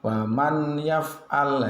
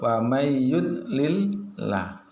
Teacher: wawu maka cara membacanya hukum bacaannya disebut idghom bighunnah. idghom artinya meleburkan nun mati atau tanwinnya dimasukkan kedalam huruf setelahnya dibaca dengan mendengung